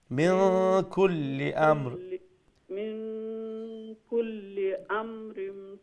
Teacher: মিন নুন সাকিন রে ইখফা করে পড়া লাগবো